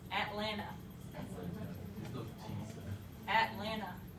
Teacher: with the glottal stop at like batman at and then the same vowel atlanta to the same vowel